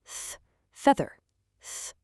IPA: ð